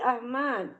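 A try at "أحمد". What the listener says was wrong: Ahmad. Ya, Ahmad itu enggak ada yang panjang, Bu. Jadi Ahmad. Tekankan di huruf awal. Ahmad.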